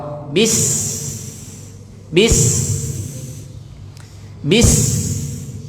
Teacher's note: pakai Sin pakai sa sa itu ujung lidahnya tempelin di belakang gigi bawah